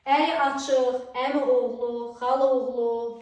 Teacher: Bibi oğlu, Əli Abbas bu sözlərin tələffüzündə mürəkkəb sözlərin qovuşağında olan birinci saitin düşmə hadisəsini görürük.